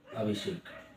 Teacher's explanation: दंत से का मूर्धन्य से हो जाता है। ये दंत से है, इसका उच्चारण दंत से होता है और इसका मूर्धा से होता है।